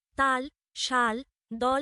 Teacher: বাতাস জিভের পেছনের এক পাশ বা দু পাশ দিয়ে বেরিয়ে যায় এবং জিভ দাঁত অথবা দন্তমূলে অবস্থান করে। তাল, শাল, দল প্রভৃতি শব্দে আমরা যে ল ধ্বনি শুনি তা পার্শ্বিক।